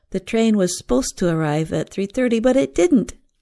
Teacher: The train was supposed to arrive at 3:30, but it didn't. Here, a two-syllable word, supposed, becomes more like one syllable, sposed.